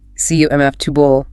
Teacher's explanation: that unstressed middle vowel often becomes a schwa, that kind of muffled ooh sound, like the A in about.